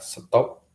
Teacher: ketika kita lafalkan P itu berhenti tanpa ada letupan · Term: implosif